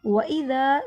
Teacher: ذال کو نرمی سے ادا کیا جاتا ہے، ذال پہ سیٹی کی آواز نہیں آتی۔ ذال کو ادا کرنے کے لیے زبان کی نوک کو دانتوں کے کنارے سے لگائیے۔ ذا کو لمبا کیا، الف سے پہلے زبر ہے، حروف مدہ ایک الف کے برابر لمبا ہوگا۔